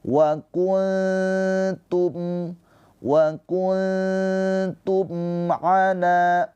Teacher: Mim sukun bertemu dengan selain mim dan ba. Ini izhar syafawi. Dibaca dengan jelas mimnya. · Cara bacanya nunnya dibaca dengan samar ditahan dua harakat sambil bersiap-siap lidah kita masuk ke makhraj huruf ta. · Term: Ikhfa hakiki